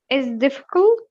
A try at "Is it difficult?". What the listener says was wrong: Don't drop the T here. Make it stop. Again, focus on his mouth position. Is it? I stop. Don't drop. Don't make a linking here.